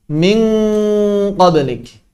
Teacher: Ketika bertemu dengan qaf, suaranya mirip kaf, tapi tebal. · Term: ikhfa